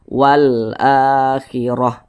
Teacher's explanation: ini huruf hamzah di atasnya ada tanda baca fathah berdiri maka huruf hamzah ini dibaca panjang ini adalah namanya mad badal